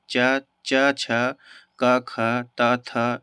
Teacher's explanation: वहां पे जो है कंपन नहीं होता है वाइब्रेशन टाइप का नहीं होता है उसको अघोष वर्न कहते हैं हिंदी वर्णमाला में जो है जितने